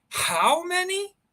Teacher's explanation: You will intone and put stress on how.